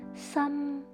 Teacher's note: tone number one is a flat tone in high pitch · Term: tone number 1